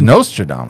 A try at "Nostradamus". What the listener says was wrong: It's Nostradamus. Why would you carry that O so hard? I think it's a Nostradamus. Nostradamus.